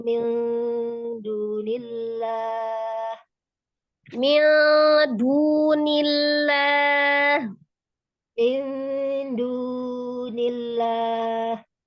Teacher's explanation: jadi nggak boleh kepanjangan ya, mad tabi'i 2 harakat, nggak boleh juga dibaca pendek ya.